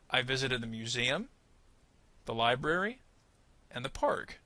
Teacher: museum and library basically received kind of similar rises but we don't exactly fall off at the end · library and museum are kind of part of the same idea only at the end when I reach the word park do I put a little more emphasis and then completely fall